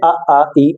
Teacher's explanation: निर अनुनासिक की बात की जाए तो इसमें हवा केवल मुंह से निकलती है कहने का मतलब जिसमें ना का उच्चारण नहीं आ रहा हो